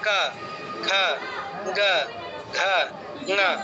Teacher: তাহলে ক বর্গ হচ্ছে কণ্ঠবর্ণ, কা খা, খেয়াল করুন একদম গলার কাছে জিহ্বার গোড়াটা লেগে লেগে ছেড়ে দিচ্ছে